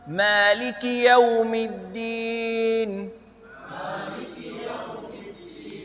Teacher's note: Sekali lagi tanpa suara panjang di Maliki.